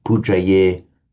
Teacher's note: the Pali drops off the final t that would be there in Sanskrit